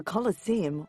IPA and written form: ˌkɒləˈsiːəm (Colosseum)